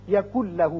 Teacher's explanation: آپ نے نون ساکن تنوین کا جو قاعدہ پڑھا ہے ادغام کا، اس میں تھے 6 حروف یرملون، لیکن ان میں 2 تھے ایسے جہاں کی ادغام بغیر غنہ ہوتا ہے، وہ تھے لام اور را. نون ساکن کے بعد جب لام آ جائے تو وہاں ادغام تو ہوتا ہے لیکن غنہ نہیں ہوتا. اب نون نہیں پڑھا جائے گا، کاف کی آواز لام سے سیدھی ملے گی.